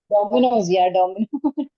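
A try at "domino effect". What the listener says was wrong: No, domino. Pizza wala nahi.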